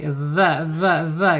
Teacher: yaitu ujung lidah menyentuh ujung gigi seri dza dza dza gitu ya keluarkan sedikit ujungnya kemudian secara sifat huruf dalal ini ada Jadi arkhawah ya, dia mengalir ketika sukun. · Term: dzal